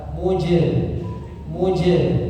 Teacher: Huruf jim sukun maka dipantulkan, ya, qalqalah. Mujr, ya. Jangan putus suara, jangan muj, ya, atau terlalu kecil, muj, bukan muj.